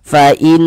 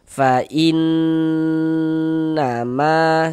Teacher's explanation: Nah, kita gunnahkan. Fa in, digunnahkan tuh ya didengungkan. Jadi di bagian innya itu suaranya itu kita tahan, kita panjangkan sejenak. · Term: gunnah musyaddadah